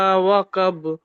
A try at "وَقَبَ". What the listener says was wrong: অকব, কফ আছে।